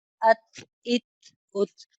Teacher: अत सिंपल नहीं पढ़ते बल्कि इसे हा के साथ अदा करते हैं, आखिर में हा साकिन की थोड़ी सी आवाज आती है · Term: हम्स